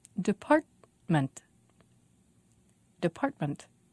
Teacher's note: department three syllables and the stress is on part